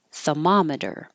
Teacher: without the R, thermometer, because you're really making the ma the longest part.